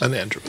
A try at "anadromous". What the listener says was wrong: no, There's no N. It's anadromous.